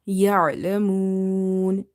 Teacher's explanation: So ain is from the halkiya letters. So it's from the middle of the throat.